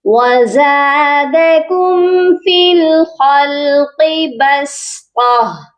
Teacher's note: سین کو باریک اور قا کو موٹا پڑھیں گے اور اینڈ پر ہا کو سائلنٹ کریں گے۔